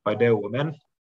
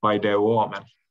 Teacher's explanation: the indicative form paideuomen has a short thematic vowel, which is lengthened in the subjunctive to paideuomen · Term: lengthened thematic vowel